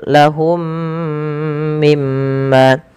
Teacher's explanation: Kemudian mim ma pada lafal m yang kedua ada bacaan ghunah. Ditahan suara mimnya karena dia bacaan ghunah. Kemudian ma dua harakat karena mad thabi'i. · Mim yang pertama ketika ia sukun bertemu dengan mim setelahnya maka ini wajib ditahan suara mim yangnya suara mimnya karena ia ada idgham mimi.